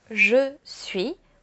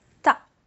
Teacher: where I'm from, so around Paris, we tend to eat away the vowels